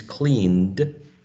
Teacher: the first or initial consonant sound is k. which is voiceless, velar, and plosive.